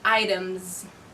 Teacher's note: ends with a sound mm which is voiced so I'm gonna say items with a Z ending